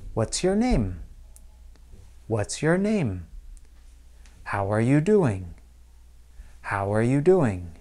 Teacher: My voice drops a little bit, almost like gravity pulling down the ball. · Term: falling intonation